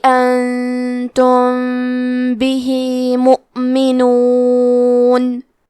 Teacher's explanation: انتم بھی، کلمت بھی کے آخری میں ہا کے نیچے کھڑی زیر ہے، یہاں حکم ہے مد صلہ صغرا، تو ہم اپنی آواز 2 مد کے برابر لمبی کریں گے